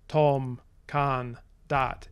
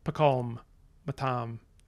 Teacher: basically monosyllables, but with a little kind of half syllable at the start. So instead of being things like tom, kan, dat, it's pakom, matam, dat, things like that. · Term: sesquisyllabicity